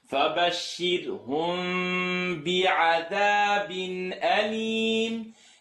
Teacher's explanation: Mim sukun followed by ba. Fourth rule of rhythm. Mim sukun followed by ba. The lips will vibrate.